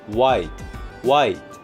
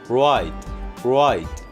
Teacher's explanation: 말하자면 앞 밖에 있는 입 모양은요, W의 우 소리와 완전히 일치합니다. wide와 ride, 이 차이는 혀 모양의 차이만 있고 입술 모양은 그대로 유지가 되는 건데요